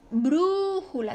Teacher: su sílaba tónica está la antepenúltima y es esdrújula